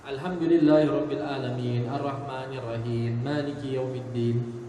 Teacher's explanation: Ha dia tidak berbunyi, ain dia tidak berbunyi.